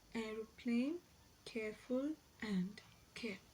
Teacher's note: a front half open unrounded vowel to a central unrounded vowel between half closed and half open position. So it occurs initially, medially, and finally in the words aeroplane, careful, and care.